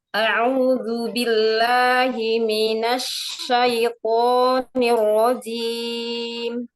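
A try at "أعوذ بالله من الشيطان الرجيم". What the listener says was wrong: Lin pada syai, turunkan bibir bawah dan rahang bawah sehingga jadi huruf I. Jangan ada hamzah. Jangan ada hamzah karena nggak ada hamzah. Langsung ke huruf to.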